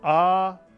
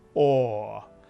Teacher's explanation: in ashkenazic Hebrew the Pak is pronounced a and the kamat is pronounced or as in the word saw